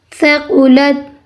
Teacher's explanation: سا نرمی سے ادا کرنی ہے. سا نہیں سیٹی کی آواز نہ آئے